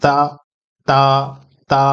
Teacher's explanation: تا میں زبان کو اوپر والے دانت کے جڑ میں ملاتے ہیں